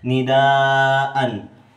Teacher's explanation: Nidaan hukum tajwid mad wajib mutasil sebab mad tabi'i bertemu hamzah dalam satu kata panjangnya 5 harokat